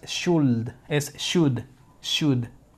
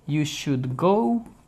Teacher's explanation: no se pronuncia la l